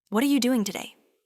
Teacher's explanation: Stress what and doing.